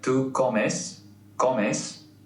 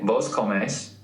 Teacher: While it is the same, the pronunciation's different. The stress goes on the last syllable.